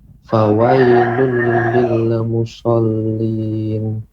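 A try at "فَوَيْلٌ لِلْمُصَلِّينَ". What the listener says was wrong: Desisnya lebih ditambah Pak. Musallin, dia tipis, artinya desisnya panjang, akan tetapi ditebalkan, dinaikkan suaranya, diangkat suaranya, ya, lidahnya naik ke atas, musallin.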